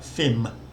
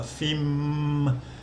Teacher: because it ends with an M sound, it's a live syllable. You can carry on voicing it. Fim, and the initial for fun is low class, so that low class initial consonant with the live syllable just makes a mid-tone.